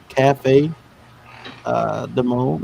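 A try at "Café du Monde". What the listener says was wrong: Cafe Du Monde. Yeah, you don't pronounce the D. Usually Cafe Du Monde. Now you can say Du Monde and all that stuff, but if you're from here, you just say Cafe Du Monde.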